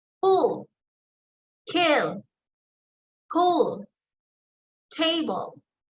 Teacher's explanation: So meaning, it says there the explosive release. So I gave the explosive release on the first, or on the initials.